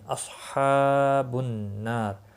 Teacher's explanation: نون مشدد پر گنہ ہوگا، الف مدہ بھی ہے، ایک الف کے برابر کھینچ کر پڑھیں گے، اور را وقف کی صورت میں را ساکن پڑا جائے گا، وقف بالاسکان ہوگا، را پر بھی پڑا جائے گا۔